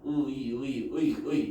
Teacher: 그래서 얘 같은 경우는 예외적으로 이가 처음이 아니라 이가 이제 끝부분에 두 번째 부분에 나오는 이제 그런 이중모음이다라는 거. 얘만 좀 따로 기억을 해주시면 된다고.